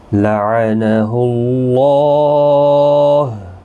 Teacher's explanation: اللہ کا لام اس پیش کی وجہ سے پر پڑا جائے گا